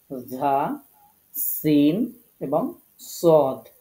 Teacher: এই দেখেন, এই যে জিহ্বার আগাটা এই নিচের যে দাঁতের আগা এটার সাথে মিলিত হয়েছে, এই যে জায়গাটি, এই জায়গা থেকে এই 3টি হরফ উচ্চারিত হয় ধা, সিন এবং সদ। এগুলো উচ্চারণ করার সময় আমাদেরকে নিচের দুই যে দাঁত আছে সেই দাঁতের সাথে জিহ্বার আগাটাকে লাগাতে হবে।